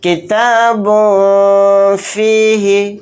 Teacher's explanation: جو لاسٹ میں نون کی آواز ہے اس کو ناک میں چھپانا ہے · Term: اخفا